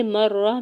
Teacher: میم کے زبر کو رام شدت کے ساتھ ملاتے ہوئے را کے اوپر سنگل زبر جلدی سے ادا کرنا ہے۔